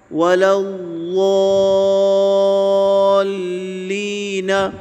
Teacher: جی اس میں غاد پر شد ہے، اسی طرح لام پہ بھی شد ہے، غاد اور لام پہ ٹھہراؤ بھی ہوگا اور آواز بھی جاری رہے گی